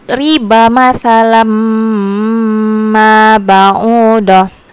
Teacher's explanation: cara membacanya yaitu dileburkan atau dimasukkan bunyi hurufnya dengan berdengung · langsung masukkan bunyinya ke huruf mim matsalamma baudoh sambil didengungkan · Dengungnya yaitu sekitar 1,5 alif sampai 2 alif. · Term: idigam bigunah, idgham biguna